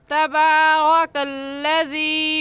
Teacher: तबारकल्लज़ी में रा के ऊपर ज़बर है, इसलिए इस रा को पुर यानी मोटा करके पढ़ेंगे